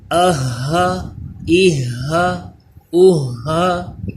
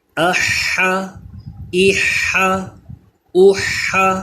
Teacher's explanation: یہ ہا حلق کے نیچے والے حصے سے، اس میں سانس کی آواز مکس نہیں ہونی چاہیے،